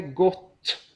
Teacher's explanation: om vi säger gott så är det en kort eh vokal och en lång konsonant